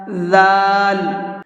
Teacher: اگر اس کو سختی کے ساتھ میں پڑھیں گے تو پھر یہ ذال نہیں رہ جائے گا بلکہ یہ زا بن جاتا ہے، اور اس کا مخرج کیا ہے وہ بھی میں بتا دیتا ہوں آپ کو۔ اس کا مخرج ہے زبان کی نوک کو اوپر کے سامنے والے جو دو دانت ہیں اس سے ٹچ کریں گے